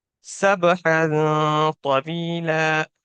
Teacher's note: کیوں غنہ کیا، کیونکہ حروف اخفا میں سے طا آ رہا ہے